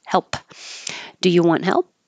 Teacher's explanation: just keep your lips closed that's it don't release the P